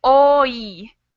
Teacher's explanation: I have this O sound and then a Y sound, or an I, a long sound. So my mouth changes. And that's what a diphthong is.